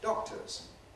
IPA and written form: ˈdɒk̚təz (doctors)